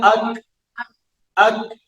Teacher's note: जुबान का जो वस्त है और जुबान का जो जड़ है, इन दोनों के सेंटर में, वस्त से पीछे और जड़ के आगे